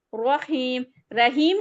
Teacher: रहीम र फिर से मोटा होगा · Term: र मोटा